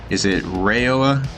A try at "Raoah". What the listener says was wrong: It's Raoah. Raoah, just a straight Raoah. It's not long A.